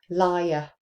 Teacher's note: And I've added that voiced palatal approximate in there. Liar. which makes it even clearer that there is a um that is two syllables.